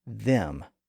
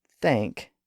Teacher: there are actually two slightly different th sounds in English. One is voiced and one is voiceless.